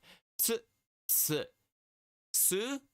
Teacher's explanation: you add a little T sound in front of the S sound t s s and then it instead it goes like you